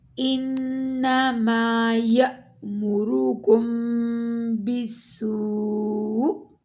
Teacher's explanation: حمزہ پر stop کرتے ہوئے ہم نے حمزہ پر جھٹکا دینا ہے